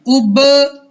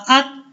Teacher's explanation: با حروف کلکلہ میں سے ہے اس لیے اس کو ہم ہلا رہے ہیں